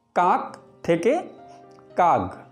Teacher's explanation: উদাহরণ দুটিতে ক গতে রূপান্তরিত হয়েছে, অর্থাৎ অঘোষ ধ্বনি ঘোষ ধ্বনি রূপে উচ্চারিত হয়েছে। ধ্বনি পরিবর্তনের এই রীতিকে বলে ঘোষী ভবন।